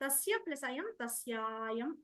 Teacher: మొదటి పదం చివర ఉన్న 'అ' తర్వాత తర్వాతి పదం మొదట్లో 'అ' వచ్చినప్పుడు , అది దీర్ఘ అచ్చుగా (దీర్ఘ) మారుతుంది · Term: సవర్ణ దీర్ఘ సంధి